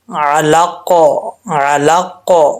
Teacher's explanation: وقف کریں گے تو قاف میں قلقلہ آئے گا، ساکن ہو جائے گا. جب حروف قلقلہ ساکن ہوتے ہیں تو ان میں قلقلہ ہوتا ہے.